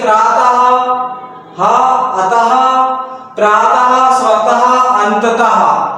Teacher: विसर्ग का चिन्ह ये रहता है 2 बिंदी। विसर्ग का उच्चारण हा की भांति होता है।